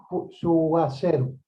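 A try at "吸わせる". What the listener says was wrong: Suwaseru. Perfect. Well done. Good.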